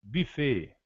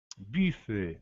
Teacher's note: na execução do U é onde se diz que o francês faz biquinho, pois o U arredonda-se os lábios e passa a ser pronunciado com um fonema quase de I